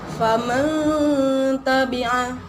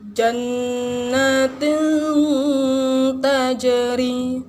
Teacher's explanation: Bacaan nun matinya disamarkan dan didengungkan sepanjang 2 harokat. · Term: ikhfa